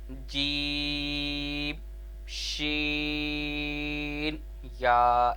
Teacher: زبان کے درمیان اور تالو کے درمیان سے ادا ہوتے ہیں۔ زبان کے درمیان یعنی ہاف زبان جسے کہہ لیں، اور تالو کا درمیان اس سے اوپر والا حصہ ہاف کہہ لیں، تو دونوں کو آپس میں ٹچ کریں گے۔